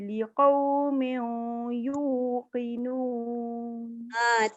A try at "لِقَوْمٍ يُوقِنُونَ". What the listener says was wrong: Tu tanwin bertemu ya, bukan bertemu waw. Jadi dia tak boleh sebut liqaumiu. Liqaumiyu.